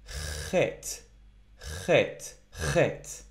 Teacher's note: not hey right it is not hey so it's not H I'm not just pushing air through I am sort of scratching my throat a little bit